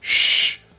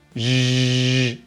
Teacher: If you can do /sh/, then you can do /zh/. To make /zh/ you turn on your voice box.